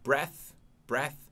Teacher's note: TH que não é vozeado. É voiceless. Porque não tem a vibração da garganta